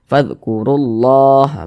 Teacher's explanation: huruf yang memiliki tanda baca dhah atau tanda baca fathah maka lafaz Allahnya dibaca tebal dibaca tafkhim sehingga kita tebalkan lafaz Allahnya